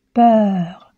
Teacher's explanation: la bouche ouverte les lèvres arrondit la langue en avant et la pointe de la langue touche les dents du bas